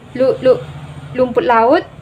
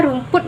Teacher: terdapat penghilangan fonem konsonan R menjadi fonem konsonan L